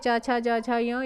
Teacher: ये च वर्ग आपका किस में आता है, कंठ के बाद तालु आता है, तालु में आ जाता है